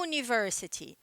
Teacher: ditongo são duas vogais juntas que tem um som nesse caso apesar de começar com vogal O sopro enunciado delas é um som consonantal som de y